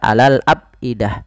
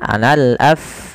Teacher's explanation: ada nafas ketika melafalkan huruf fa yang dimatikan